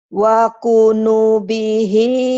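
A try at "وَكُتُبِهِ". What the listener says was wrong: Wakutu. Titiknya dua. Titiknya dua. Wakutu bihi. Wakutubihi wa rusulihi. Tinggal lembutin ya, lembutin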